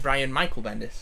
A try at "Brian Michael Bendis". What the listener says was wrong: But emphasis on Michael. Brian Michael Bendis.